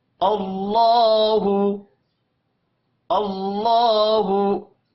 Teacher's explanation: अब यहां पर देखें, अल्लाह के नाम से पहले हमजा के ऊपर जबर है, अल्लाह के नाम को मोटा पढ़ेंगे। और लाम के ऊपर खड़ी जबर है, इसको एक अलिफ के बराबर खींच कर पढ़ना है, हु को खींच कर नहीं पढ़ेंगे।